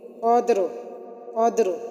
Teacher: اگر ہم یہاں وقف نہیں کریں گے تو را کو باریک پڑھیں گے، اور اگر ہم وقف کر رہے ہیں تو وقف کی صورت میں یہ را موٹی ہوگی، قدر، تو ہم نے را کو موٹا پڑھا۔